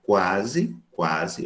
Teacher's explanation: Observe quando eu digo quase, quase, eu arredondo os lábios. Então, esse K de quase, quá, esse QU representa o fonema K, a oclusiva.